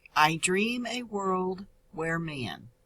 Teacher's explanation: a is a one-syllable sound and is an unstressed syllable world is a stressed syllable